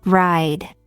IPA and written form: raɪd (ride)